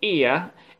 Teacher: the back and if you look carefully at this sound eeeh it consists of two sounds the first one is the front sound and the second sound is schwa which is called ah so when we are producing this sound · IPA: /ɪə/